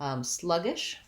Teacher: Sluggish, first syllable stress, vowel schwa